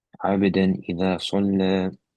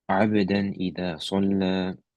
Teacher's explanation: Components wise, what components are we keeping or not keeping? There's no ghunna, and the noon sound is kept. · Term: idhar